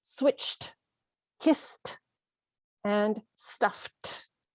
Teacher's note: So any of these words ending in an unvoiced consonant sound, we are pronouncing the ed as t.